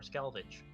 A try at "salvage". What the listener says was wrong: Keep saying salvage. It's driving me on a wall. Stop adding a C. There's no C in salvage. Yeah, that must be what you're doing. You're combining scavenge and salvage,